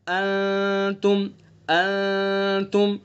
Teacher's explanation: انتم نون میں غنہ کریں گے، اخفا ہوگا اس کے اندر، یعنی ناک کا جو بانسا ہے وہاں سے چھپا کر کے الف کے بقدر اس کو ادا کریں گے. انتم ایک ہوتا ہے ناک سے نکال رہے ہم ان، اس طرح نہیں ادا کرنا اخفا کو، بلکہ ناک کی نرم ہڈی سے نکالنا ہے.